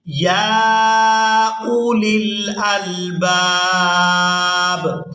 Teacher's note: اب یہاں پر اگر ہم وقف کر دیں گے تو وقف کی صورت میں با کو ساکن کر دیا جائے گا